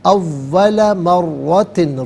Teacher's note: خلقناکم اول مرتن، اول مرتن، را پر زبر ہے، را کو پر کر کے پڑھیں گے، تشدید ہے، جماؤ کے ساتھ پڑھا جائے گا